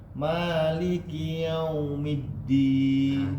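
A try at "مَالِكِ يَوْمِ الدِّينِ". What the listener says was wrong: Nah, kenapa agak sedikit keluar dari hidung, Pak? Maliki yaumiddin.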